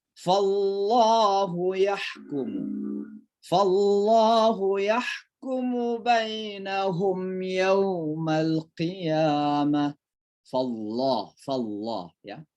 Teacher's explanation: Karena kata Allah didahului dengan huruf yang berbaris fathah, maka dibaca tebal ya.